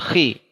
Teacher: Ketebalan menurun banget saat kasroh. Saat dhammah menurun sedikit, saat kasroh lebih menurun lagi.